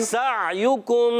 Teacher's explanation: عین کو حلق کے درمیان والے حصے سے ادا کرنا ہے اس کو حمزہ نہیں کرنا